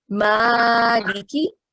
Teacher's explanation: So that's why we have prolonged ma to 2 counts. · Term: vertical fatha